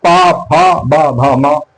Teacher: पा, फा, बा, भा, मा, ये ओठ है, ओठ से उच्चरित होते हैं